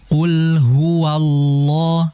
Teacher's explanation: Qul huwallah la ditebalkan sedikit lagi di kalimat ee lafzul jalalahnya Allahnya.